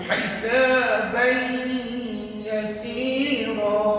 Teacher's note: Dia kena tanwin tu jangan dibunyikan, masuk dalam ya. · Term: idgham ma'al gunnah